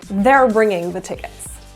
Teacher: So in a sentence like, they are bringing the tickets. In speech, it's reduced to their. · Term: contractions